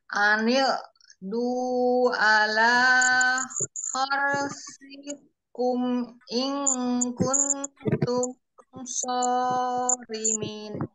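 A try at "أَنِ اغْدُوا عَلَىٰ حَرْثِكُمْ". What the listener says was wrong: Huruf lo-nya masih kurang ini, kurang mengalir, Um. Jadi terdengarnya seperti Hamzah malah. Ani du. Ani du. Ani du. Ani du. Dialirkan, jadi jangan langsung berhenti supaya tidak tawalut. Jadi tidak anige, anige, jangan ada ge-nya. Anig, coba sampai du saja. Anig du. Anil du.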